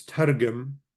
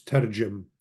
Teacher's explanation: Targum, and what's usually pronounced with the gamel being sort of softened as a J, so it's tarjum.